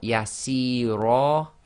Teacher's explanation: we've got the kasrah-yaa, and that can only be read as 2 long because the sound after it is being read, i.e. the ra. There's no sakin letter.